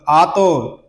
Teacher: اس کو ہم کلکلے کے ساتھ ادا کریں گے، اور یہ حروف مستعلیہ میں سے بھی ہے، اس کو پر بھی پڑھیں گے